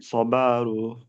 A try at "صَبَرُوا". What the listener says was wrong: সবারু, সদের মধ্যে লম্বা নাই, হ্যাঁ, রয়ের মধ্যে শুধু লম্বা, একটা মধ্যে হরফ সবারু।